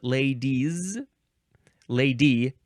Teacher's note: Then it's z sound, ladies, ladies, because it's followed by a vowel. The es is followed by a vowel.